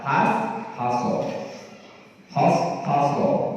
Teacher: dan berhati-hatilah terhadap huruf hak. Jangan dibaca tebal pada lafaz hashaso.